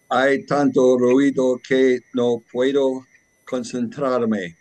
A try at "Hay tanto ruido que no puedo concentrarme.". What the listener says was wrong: Good. Great pronunciation.